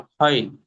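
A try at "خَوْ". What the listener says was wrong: ক্ষয় না, এটা ওয়াও লিন, এটা ইয়ালিন না। ক্ষয় আসছে দেখেন তো? আসছে না তো, খাও আসছে দেখেন। খাও ওয়াও জবর খাও। ভুলে যাচ্ছেন কি আপনি লেনের হরফ?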